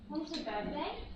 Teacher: The rising tone here shows that I'm checking the date because I have temporarily forgotten.